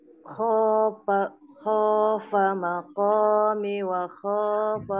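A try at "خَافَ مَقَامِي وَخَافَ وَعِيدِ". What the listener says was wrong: Mi-nya panjang Ibu. Mi maqami panjang mi.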